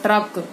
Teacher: उसी प्रकार यदि ट, ड, द में र का संयोग हो जाए, ट, ड और र में, ट, ड और द में र का संयोग हो जाए तो र पूरे अक्षर की तरह बोला जाएगा